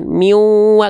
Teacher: Nih, waw bertasydid di sini dibaca ditahan